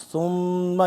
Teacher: सुम्मा यहां पे गुना होगा सुम्मा मी मुशद पे अराबाहु आइन को हलक से सही करके निकालेंगे और वा को